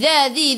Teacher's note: Dha dhi dhu hujung lidah keluar pada gigi depan. Dha dua harakat ada alif kecil mad asli.